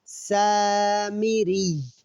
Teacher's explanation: سین کو ہم 1 الف کے برابر کھینچ کر پڑھیں گے، اور سین سختی والے حروف میں سے ہے تو سین پڑھتے ہوئے سیٹی جیسی آواز آئے گی۔